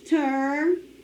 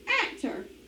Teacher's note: I divide between my consonants. The accent is on the first syllable.